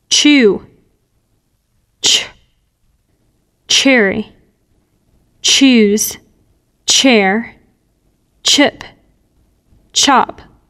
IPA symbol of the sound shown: tʃ